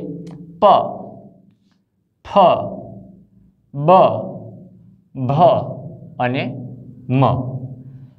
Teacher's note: જે વ્યંજનોનું ઉચ્ચારણ આપણા બંને હોઠ પરસ્પર સ્પર્શ થયા વિના શક્ય બનતું નથી એટલે કે બંને હોઠ જ્યારે સ્પર્શે છે ત્યારે આ વ્યંજનોને આપણે સ્પષ્ટ રીતે ઉચ્ચારી શકીએ છીએ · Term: ઓષ્ઠ્ય